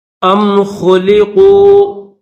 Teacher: خا کے اوپر پیش ہے، خا کو موٹا کریں گے اور اس کے بعد یہ جو قاف ہے اس قاف کو بھی موٹا کر کے پڑھیں گے